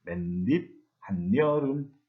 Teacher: 그래가지고 맨입, 한여름이 됐는데 이것을 실제로 발음을 할 때에는 분명히 중간에 없었던 니은을 덧붙여가지고 맨입, 한여름 이렇게 발음을 합니다. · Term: 니은 첨가 현상